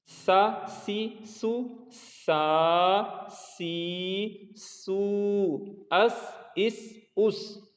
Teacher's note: इसमें सीटी की आवाज़ नहीं आनी चाहिए। अच्छा, सीन पर जब आ जाएंगे तो सीन में सीटी की आवाज़ आएगी, तो ये सा से मुख्तलिफ हो जाएगा।